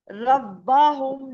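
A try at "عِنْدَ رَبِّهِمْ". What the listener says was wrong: रब्बा, रब्बा, ये बा के ऊपर जबर है क्या? रब्बा हम पढ़ा आपने। होम क्यों? के ऊपर पेश नहीं है, अब पेश डाल दिया आपने। रो नहीं, मैं रब्बा है ये।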